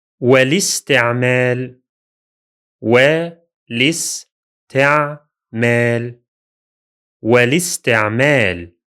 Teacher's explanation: In this case, both Hamzat al-waṣl are silent, the one in the definite article al and the one at the beginning of the word itself. It's pronounced as if the word is written like this, without the two hamzas.